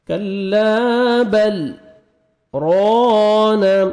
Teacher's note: کلا بل ران, را کے اوپر زبر ہے, را کو موٹا کر کے پڑھیں گے, الف مد ہے, 1 سیکنڈ را کو کھینچنا ہے